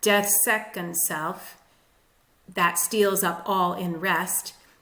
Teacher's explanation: possibly a spondee at the beginning of line 8, which means 2 accented syllables, and then the pattern of iambs falls back into place.